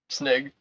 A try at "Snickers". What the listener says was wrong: Snick. Snick. Enunciate the K. Say the K. Say sni. No, say sni. No, it's Snickers.